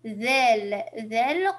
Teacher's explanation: On sort le bout de la langue pour la bonne prononciation de حرف الذال.